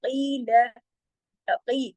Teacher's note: काफ मोटा पढ़ा जाएगा, दो हरकत कीजिएगा, लाम सिर्फ एक हरकत